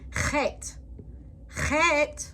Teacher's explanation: Chet is pronounced with a throat clearing sound that isn't in the English language.